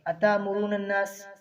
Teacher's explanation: جو تا کے آگے حمزہ ہے اس کو جھٹکے کے ساتھ پڑھیں گے